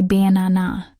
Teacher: with the stress on the second syllable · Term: stressed syllable